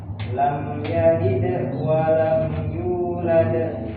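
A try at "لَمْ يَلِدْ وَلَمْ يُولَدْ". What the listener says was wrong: Qalqalah itu jangan berhenti sejenak. Jadi qalqalah itu kalau posisinya di tengah, langsung aja mengalir. Lam yalid wa lam yulad. Lam yalid wa lam yulad.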